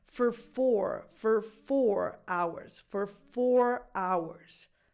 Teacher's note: this O between the F and the R becomes a schwa.